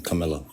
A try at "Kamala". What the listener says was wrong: It's Kamala. There's no I in her name. It's 3 fucking syllables. That's an Indian name, and it's pronounced Kamala.